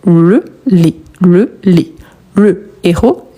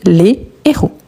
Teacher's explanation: Ce qui change ici, c'est la prononciation de le plus fermé et les plus ouvert.